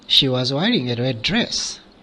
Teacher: it is normal dress is the final Lexical Word it's a noun that is why it is accented as well as it gets the intonation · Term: tonic stress